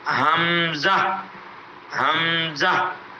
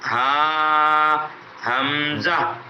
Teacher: یہ ہاں اور حمزہ ان دونوں کی ادائیگی حلق کے نیچے والے حصے سے ادا کی جائے. نیچے والے حلق کے نیچے والے حصے سے ان دونوں کی ادائیگی ہے.